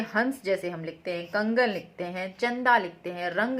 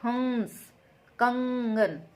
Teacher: जैसे हंस, कंगन, तो ये जो अंग का साउंड है ये पूरा नाक से निकल रहा होता है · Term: अनुस्वर